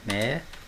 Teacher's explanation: a sílaba tônica não é a última, nem a penúltima, é a antepenúltima. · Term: proparoxítona